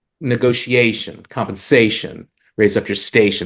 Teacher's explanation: Those are all feminine rhymes. The emphasis is on the penultimate syllable.